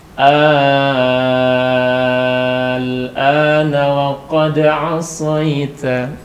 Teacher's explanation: Jadi al-ana panjangnya sampai 6 harokat. Tapi ringan aja, ringan. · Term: mat lazim mukhaffaf harfi